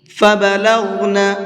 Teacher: غین کو منہ بھر کے پڑھیں گے